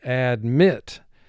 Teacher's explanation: So you can hear the emphasis goes to the second syllable.